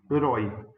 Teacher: ela é uma palavra oxítona com ditongo aberto na última sílaba